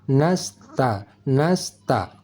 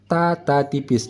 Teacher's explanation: desis angin huruf Sin mesti halus tidak tebal